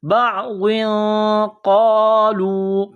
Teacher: تنوین کے بعد قاف ہے، حروف اخفا ہے، تو یہاں غنہ کرنا ہے، آواز ناک میں چھپانی ہے۔